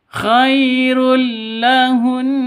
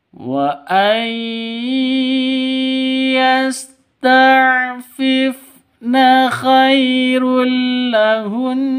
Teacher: Di sini ada tanwin bertemu dengan lam. Cara bacanya masuk ke lam tanpa dengung. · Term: idgham bila gunnah